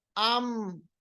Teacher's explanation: अगर मीम का मखरज आपको जानना है तो मीम को हम साकिन बनाएंगे, उससे पहले हमजा पे जबर लाएंगे। आम यानी मीम अदा करते वक्त हमारे होंठ आपस में मिल रहे